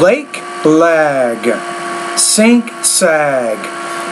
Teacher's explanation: So when that G's at the end, the vowel which precedes that G should be longer.